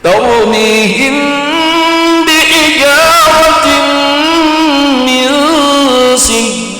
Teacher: Ikhfa syafawi itu boleh dengan intibak tam dan boleh dengan intibak ghairu tam. Intibak tam nggih mingkem sempurna.